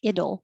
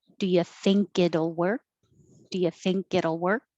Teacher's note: you have it will you can make the contraction ittle but the t changes to a d because it's between two voiced sounds